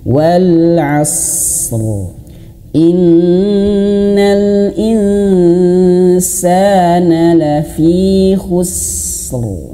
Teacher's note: Harus betul-betul jelas dia tebal huruf rnya